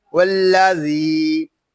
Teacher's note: ذال کو ہم کھینچ کر پڑھیں گے ایک الف تک کیونکہ یہاں یا مدہ ہو رہا ہے